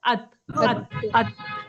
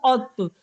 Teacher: अत अत अत लेकिन त को मिलाएंगे तो क्या होगा क्योंकि यह पुर हरूफ है इसकी इसकी सिफात इसकी इसका हक क्या है कि इसे मोटा पढ़ा जाए इसको औ की आवाज में पढ़ा जाए